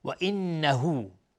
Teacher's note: نون مشدد 2 حرکت غنه میدیم